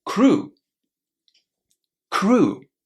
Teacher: It's oo, a long oo, crew.